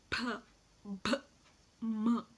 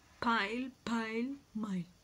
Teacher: uh you know consonants so the first classification is bilabial so for bilabial sounds the articulators are the two lips and we see they both meet